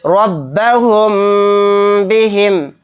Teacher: میم ساکن کے بعد با آ گیا تو یہاں پر اخفائے شفوی کا قاعدہ ہوگا، یعنی یہاں پر غنہ کے ساتھ اخفا کریں گے